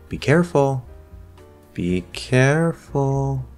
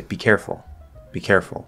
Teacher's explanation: it's a command command needs to feel firm and certain but when we lift off on that little rise there this gives an implied warning